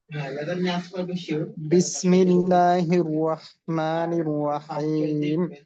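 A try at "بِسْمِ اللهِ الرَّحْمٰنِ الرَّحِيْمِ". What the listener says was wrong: আচ্ছা, এইখানে এই শেষে তো ৩ আলিফ টান, তো টান পুরা করতে হবে, টান যেন ছোট হয়ে না যায়। আর সর্বোচ্চ যে পরিমাণটা আছে ওইটা আদায় করা। বিসমিল্লাহির রহমানির রহিম।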